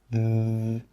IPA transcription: ð